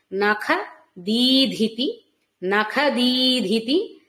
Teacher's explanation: దీ పలికినప్పుడు అక్కడ మహాప్రాణం లేదు. మళ్ళీ తర్వాత ధితి అని వచ్చినప్పుడు మహాప్రాణ ధకారం ఉంది.